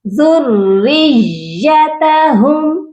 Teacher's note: یہ پڑھا جائے گا ذُرِّيَّتَهُمْ، یا پر بھی سختی اور را پر بھی سختی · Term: مشدد